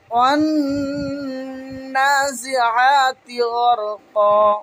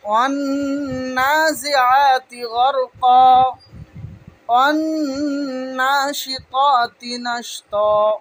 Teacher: যেমন এখানে আমরা দেখতে পাচ্ছি ওয়ান্নাজিআতি, এইখানে হবে আলিফ এবং লাম বাদ। এখানে আলিফ এবং লামকে বাদ দিয়ে তারপরের অক্ষরে নুনে তাসদিদ থাকার কারণে সেইখানে আমরা তার সঙ্গে মিলিয়ে পড়ব। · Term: হুরফে শামসির কায়দা